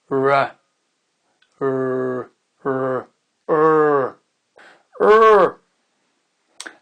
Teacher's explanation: Alors, ce qui se passe, c'est que la langue recule, R, et elle va former une sorte de boule, ce qui fait que ça va résonner un petit peu dans votre palais. La langue ne touche pas le palais. Elle recule et elle se bombe un petit peu en arrière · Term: le son R